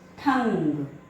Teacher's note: अंग की मात्रा को जब भी हम उसका उच्चारण करते हैं तो ध्वनि हमारे नाक व मुंह दोनों से आती है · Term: अनुस्वार